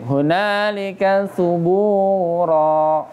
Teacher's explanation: Tebal ya, terkait bab ini tafkhim, tebal ra-nya karena walaupun dia tanwin ya, tetap baca tebal.